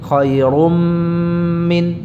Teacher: Jadi mimnya ini apa? Memanjang, disertai dengan gunnah ya, yang jelas, yang panjang. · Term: idgham bi gunnah